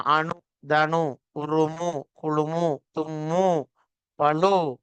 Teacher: மெல்லின இடையின மெய்களோடு சேர்ந்த உகரமும் சொல்லுக்கு இறுதியில் வரும்போது குறைந்தொழிப்பதில்லை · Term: முற்றியலுகரம்